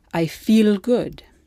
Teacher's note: Italian only uses the light L and not the dark L